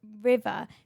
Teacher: you're doing your R's with your top teeth in your lip